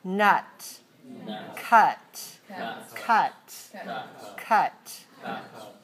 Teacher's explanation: it's not too low like ah, and it's not high like e. It's middle. It's a central vowel. · where the sound gets made, is in the center of the tongue, which is not high and not low. It's just in the mid-range. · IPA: ʌ, /ʌ/